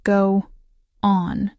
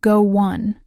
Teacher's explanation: But in fast natural speech, it becomes go on. That little W sound in the middle isn't a separate word. It's just a bridge between the vowel sounds in go and on. English speakers use these bridges to keep the flow of speech smooth. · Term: linking